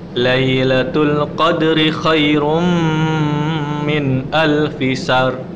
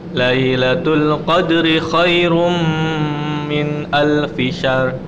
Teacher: Tanwinnya ketemu Mim. Kita tahan 2-3 harokat. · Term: idgham bi gunnah